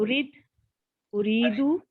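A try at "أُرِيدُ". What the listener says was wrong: नहीं, उरीद नहीं आएगा ना, पेश के साथ नहीं आएगा, अरीद, अकीम की तरह।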